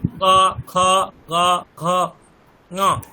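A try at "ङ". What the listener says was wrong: না, পঞ্চম বর্ণটি ঠিক উচ্চারণ হচ্ছে না।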